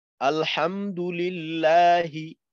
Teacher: তারপর আলিফ লাম জবর, হামজা লাম জবর আল, হামিম জবর হাম, আল হাম, দাল পেশ দু, আলহামদু, লাম লামজের লিল, লাম খারা জবর লা, হাজের হি, আলহামদুলিল্লাহি। এইখানে লাম পাতলা হবে, কারণ এইখানে আল্লাহ শব্দের তাসদিদের ডানে জের আছে